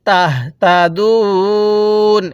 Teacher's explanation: ওয়াকফের সময় আমরা এখানে তিন আলিফ টান দিব